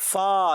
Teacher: ऊपर के दांतों के किनारे जब नीचे वाले होंठों से लगते हैं, होंठों के तर हिस्से से, तो अदा होता है फा।